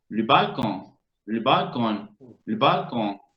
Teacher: La E ahí es muda, completamente.